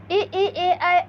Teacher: ई ए ऐ अग्र स्वर है